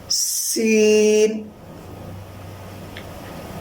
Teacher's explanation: سا اور سین کے اندر یہ فرق ہے کہ سا کے اندر زبان، یعنی سا کے اندر دونوں دانت ایک جگہ نہیں ملتے، اور سین کے اندر دونوں دانت ملتے ہیں، اوپر والے اور نیچے والے ملتے ہیں ایک ساتھ، اور ہلکی سی سیٹی کی آواز آتی ہے